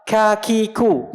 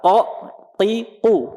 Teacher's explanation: K harus keluar udara. Qaf nggak boleh keluar. Padahal sama-sama di pangkal lidah.